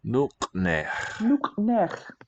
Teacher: So capital H is a rough ch sound, made pretty far back.